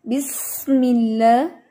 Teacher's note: बिस्मिल्लाह में आप सीन की सीटी को और नुमाया करेंगे तो और इंशाल्लाह बेहतरीन हो जाएगा। बिस्मिल्लाह, उसके बाद में हिर्रहमा, रॉ, इसको जितना आप हैवी लेके जाएंगी उतनी ही इसकी अदायगी दुरुस्त होगी।